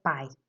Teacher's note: está em cima da última sílaba e é uma palavra aguda